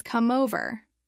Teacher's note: instead of pausing the sound flows from the consonant straight into the vowel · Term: consonant to vowel linking, Consonant to vowel linking